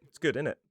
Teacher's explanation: Sometimes we shorten it down and make it sound more like innit.